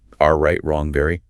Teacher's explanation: For the English R, the tongue tip curls back slightly in the mouth, but crucially, it doesn't touch the roof of the mouth. The sides of the tongue might touch the insides of your top back teeth.